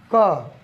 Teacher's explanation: क बोलेंगे तो आपको खुद अनुभूति होगा कि कम वायु की आवश्यकता पड़ रही है। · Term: अल्प प्राण